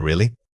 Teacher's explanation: To show genuine surprise with really, your voice should climb when you say it. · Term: upward lift